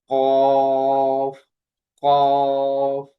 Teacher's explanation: জিহ্বার গোড়া তার বরাবর উপরের তালুর সঙ্গে লাগিয়ে উচ্চারিত হয় কফ